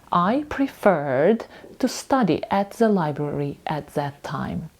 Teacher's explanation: У нас у слові prefer наголос падає на останній склад